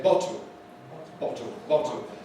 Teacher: Where the L is syllabic, as in a word like bottle, there is now another possibility. Some people don't make a lateral at all for an L here. They make a kind of vowel sound